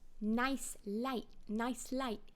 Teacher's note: the diphthong I, which in MLE is much more forward in the mouth. Rather than I, they'd say I.